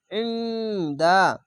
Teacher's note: ইখফাগুনা বাংলা অনেস্কার মতো হবে আইন নুন জের ইন দাল দেওয়া দা ইন্দা আইনকে মোটা করে